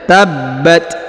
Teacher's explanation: huruf ta diberikan hembusan tipis ya karena berharakat sukun